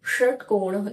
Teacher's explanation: जिभेचा जो पृष्ठभाग आहे तर तो मूर्धेला म्हणजेच वरच्या भागाला थोडासा स्पर्श करतो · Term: मूर्धन्य